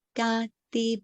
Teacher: Ga, di, both high tone.